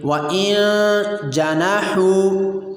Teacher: اگلی مثال بھی ہماری نون ساکن کی ہے، اس کے بعد حرف اخفاء جیم آ رہا ہے، اس کو بھی نون پر اخفاء کریں گے اور نون کی آواز کو ناک میں لے جا کر ایک الف کی مقدار چھپائیں گے